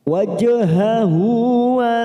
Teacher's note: kita masuk pada kata wajhahu. Hu hadhamir yang berharokat duma terbalik, ini namanya mad silah khosirah, 2 harokat atau 2 ketuk kita panjangkan